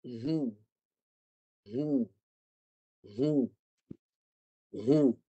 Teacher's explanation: huruf ha baris depan bunyinya nipis